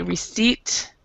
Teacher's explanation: oh and we actually do not pronounce the b here and we don't pronounce the p in receipt